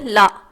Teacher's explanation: மேல் அன்னத்தின் நடுப்பகுதியை தொடுவதால் பிறக்கும் எழுத்து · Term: பொது லகரம்